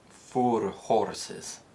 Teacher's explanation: where the OR sound exists in received pronunciation, it's replaced with a short O or a more closed O sound, depending on the word. So a phrase like 4 horses in Scotland is likely to be pronounced 4 horses. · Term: north-4 split